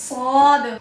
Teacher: सीटी की सिफत भी है, सीटी की आवाज आनी चाहिए, सीटी की आवाज आएगी सौद।